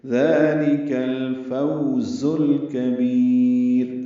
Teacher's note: کاف باریک ہے، با کو لمبا کریں گے، را باریک پڑھیں گے